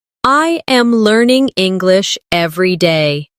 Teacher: Notice how my voice rises slightly on learning and falls at the end on day.